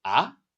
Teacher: The pitch is rising like you're asking what? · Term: second tone